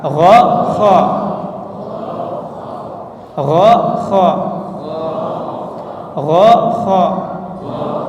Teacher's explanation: Kalau K itu maju sedikit maju sedikit dari go.